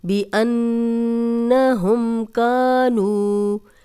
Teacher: نون پہ شد ہے اس لیے یہاں پہ ہم نے غنہ کیا ہے